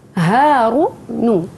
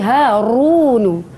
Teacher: Huruf ra pada perkataan Harunu kita kena baca dalam keadaan tebal ataupun ra tafkhim.